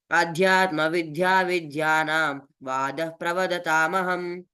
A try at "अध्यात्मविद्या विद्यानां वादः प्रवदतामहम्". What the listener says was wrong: విద్య అంటున్నావు, విద్య కాదు, దాకు పొక్కిలేదు. విద్య. అధ్యాత్మ విద్యా విద్యానాం దాకు పొక్కిలేదు కదా. అధ్యాత్మ విద్యా విద్యానాం చెప్పు.